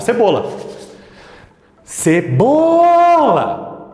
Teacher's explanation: então o BO é a sílaba tônica